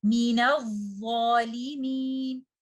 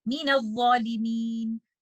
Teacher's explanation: Letter dha is a letter of rakhawa. You have to remember to give the timing of the rakhawa letter to the first letter dha, which is sakin.